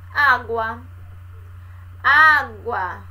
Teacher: A semivogal U mais a vogal A. Então, a vogal mais fraca, o som mais fraco sendo pronunciado para o som mais forte. O som mais fraco do U para o som mais forte do A. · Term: crescente